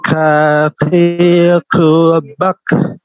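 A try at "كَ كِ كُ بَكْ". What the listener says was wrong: Baik, posisinya agak ke atas sedikit Pak, posisinya. Posisi huruf jangan sampai sama dengan huruf qaf. Posisinya agak sedikit ke atas. Ka.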